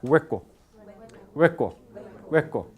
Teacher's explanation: la lengua toca la zona velar causando qué causando fricción por tanto este sonido es sí consonante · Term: consonante fricativa